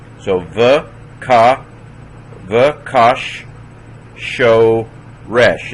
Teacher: That's a doubling dagish. So it's kash, closes a syllable, and then show as a new syllable, resh. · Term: doubled sheen